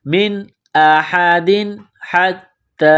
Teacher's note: تنوین کے بعد حا ہے، حروف حلقی ہے تو تنوین پر غنہ نہیں کریں گے